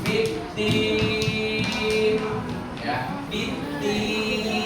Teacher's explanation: panjangnya pun 6 harokat atau 3 ayunan atau 6 detik